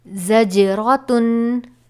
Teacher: یہاں پر جیم ہے حروف قلقلہ، اس لیے اس کو جنبش دے کر پڑھیں گے